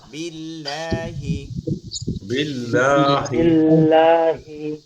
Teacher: মনে রাখতে হবে বিল্লাহ এটা চিকন হবে লা